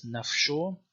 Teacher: It has a fricative post-vocalic pronunciation in Western Syriac as F, so like soul or self is nafsho.